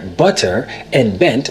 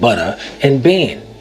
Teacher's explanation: The softening of the T's, where butter and bent would sound like butter and bane.